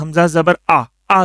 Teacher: یہ گلے کا جو درمیان والا حصہ ہے سینے کی طرف والا وہاں سے نکلتا ہے حمزہ